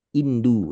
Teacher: Jadi orang Arab tuh nyebut o tuh u. Indonesia. O-nya jadi domah dipanjangkan.